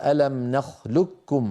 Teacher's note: بالادغام المحض مستكمل التشديد يكون النطق بكاف خالصه لا يبقى للقافي اثر